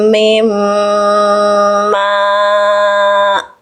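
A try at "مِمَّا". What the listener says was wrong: Mim jangan mim. Mas itu masih agak ke e bunyinya.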